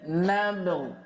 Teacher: Fa'idha sakanat bayyana qalqalataha, dan apabila ba disukun maka dia perjelas qalqalahnya